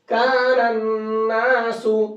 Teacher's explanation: ہم نے اس نون کو نون میں ملایا ہے، الف لام کو چھوڑ دیا ہے۔ تو سب جگہ پر الف لام کو چھوڑ دیں گے، کب چھوڑیں گے، جبکہ حروف شمسی سے پہلے الف لام آ جائے۔